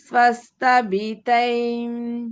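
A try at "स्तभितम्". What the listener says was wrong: తై కాదు తై నేజల్ ముక్కు నుంచి కూడా రావాలి సౌండ్ అది తం ఏన స్వహ అవును స్తభితం అన్నమాట స్వహ స్తభితం స్వ కాదు స్థానే స్వహ ఇక్కడ విసర్గనే వస్తుంది స్వహ స్తభితం అన్నమాట విసర్గ లోపించింది అక్కడ విడదీస్తే అలా వస్తుంది ఓకే మనం ఇది విడదీసి చదవట్లేదు సంధి జరిగింది కాబట్టి అక్కడ విసర్గ లోపమైంది అది ఏమనాలి ఏన స్వస్తభితం భితం అని చదవకుండా భితై అనాలి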